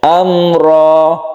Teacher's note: mim mati bertemu dengan ro kita sebut dengan izhar syafawi yang kita baca pendek ya atau tidak berdengung jelas terang itu ya Amro rnya kita baca panjang cuma satu Alif saja